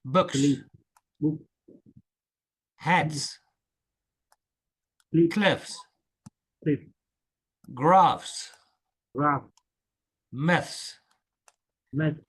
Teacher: the s is voiceless. We don't use our voice. We don't use our voice.